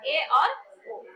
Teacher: मतलब हमारा मुख जो है वो क्या हो जाता है, आधा बंद हो जाता है। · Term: हाफ क्लोज